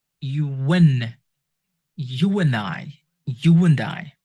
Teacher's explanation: When you pronounce a vowel sounds and your lips around oo, o, or ow, your lips around, slightly around when you pronounce those vowels, and the next word starts with the vowel sounds, try to insert like a W, like a W sound between those vowel sounds